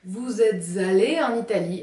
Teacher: avec une liaison supplémentaire entre « être » et « aller », mais elle n'est pas obligatoire.